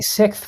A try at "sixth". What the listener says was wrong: You're saying sick with a th at the end. Sick. Sixth. Sixth. Just say six. January 6th. You can just say